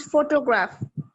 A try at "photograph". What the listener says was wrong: Okay, excellent.